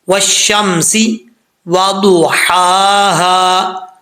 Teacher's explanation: والشمسی وضحاها، ضاد حروف مستعلیہ میں سے پر پڑھا جائے گا